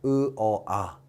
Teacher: 저모음이 입이 가장 크게 벌어지는 거예요. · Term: 개모음